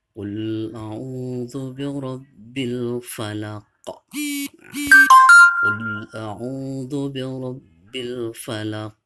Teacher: Kalau berada di akhir seperti ini namanya qalqalah kubro. Maka cara membacanya memantul ya. · Jadi qafnya itu harus memantul ya, bil falaq di dalam tenggorokannya ya.